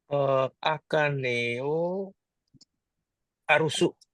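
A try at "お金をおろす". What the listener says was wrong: Ini O, bukan A. Hai, orosu.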